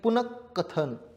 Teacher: र च्या पुढे कठोर व्यंजन आलेला आहे याचा अर्थ र ची जागा विसर्गाने घेतली